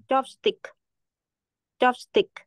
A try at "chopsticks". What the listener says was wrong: khoan. Tiếng âm S ở cuối là chopsticks.